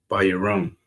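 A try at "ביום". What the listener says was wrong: It's not a ra.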